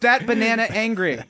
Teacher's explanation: the next word has to begin with a vowel and then you add an R to the end of the previous word